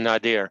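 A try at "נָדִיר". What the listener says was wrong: Nadir, not Nadir. The accent is on the first syllable. Nadir.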